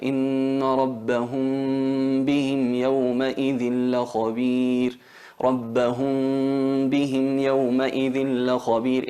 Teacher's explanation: abrimos un poquito los labios, no los pegamos, no pegamos los labios para que no se note la M claramente, y exageramos o hacemos notar lo que es la nasalización, la gunna, en la cavidad nasal. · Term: al-ikhfa